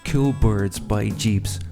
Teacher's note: we can hear the tone ascending or going up in perceived pitch